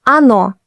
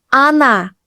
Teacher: Он is stressed on the o, on. But in она, оно, они, the first O is unstressed, so it sounds like а. We say она, she, оно, it, они, they.